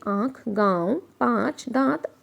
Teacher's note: तो आप महसूस करेंगे कि जब आप इसकी ध्वनि निकाल रहे होते हैं तो आपकी नाक से आवाज़ आती है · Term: अनुनासिक